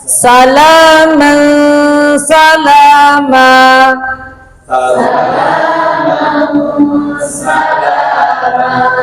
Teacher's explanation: Nah, panjangnya la sama panjangnya ma sa ma jangan salama kepanjangan manya kan sama-sama satu alif.